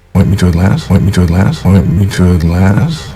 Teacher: Notice the upward intonation because it's a question that doesn't start with the 5 W's, who, what, where, when, why, and how.